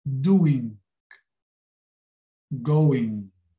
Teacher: Going. Aquele G do fim, do ing, é quase na despedida da palavra. Tocamos ligeiramente no G.